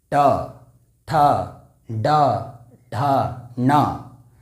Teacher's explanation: मूर्धा कहने का तात्पर्य यह है जहाँ से ट का उच्चारण होता है, ट कहने से हमारा जो जीभ है वह तालु के और ऊपर जा रहा है, वही हमारा मूर्धा है।